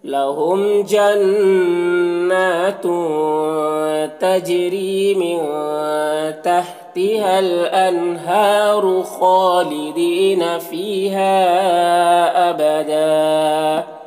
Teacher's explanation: تجری جیم میں قلقلہ کریں گے. را کو باریک پڑھیں گے، یا مدہ ہے ایک الف کے برابر کھینچیں گے. · من کے نون میں اخفا ہو رہا، نون کی آواز کو ناک میں چھپا کر پڑھیں گے